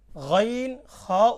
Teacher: 3 নম্বর মাখরাজ হলকের শেষ হইতে গইন খ উচ্চারিত হয়